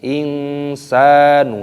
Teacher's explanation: dibaca ya ayyuhal tidak seperti itu pendek ya ayyuhal ingin Sanu sukun bertemu dengan huruf Sin hukumnya dibaca ikhfa